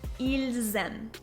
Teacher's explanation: But you should note that there is a required liaison in the sentence as well, and this is between il and aiment